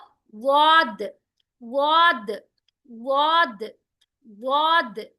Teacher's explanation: आपकी जुबान है ना, जुबान का बिल्कुल किनारा, ये वाला साइड, साइड जब आपके ऊपर के मोलार्स को जाकर टच होते हैं ना, तो आपका निकलता है वाद।